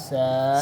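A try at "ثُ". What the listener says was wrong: سیٹی نہ ہے. سا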